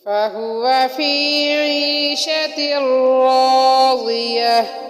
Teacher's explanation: ہا حروف حلقی والی ہا ہے جو سینے کے آخر سے ادا ہوتی ہے، جو کہ حلق کے آخری حصے سے ادا ہوتی ہے جو کہ سینے کی طرف ہے۔